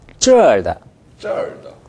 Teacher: 사성이니까 음조를 좀 높게 잡아 봅시다.